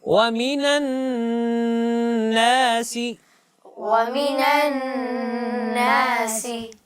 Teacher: کیونکہ نون مشدد ہے. جی نون کے اوپر شد ہے، اس وجہ سے اس میں غنہ کرنا ہے